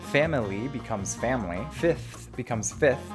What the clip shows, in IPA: fæmɪli becomes fæmli, “fifth” fɪfθ becomes fɪθ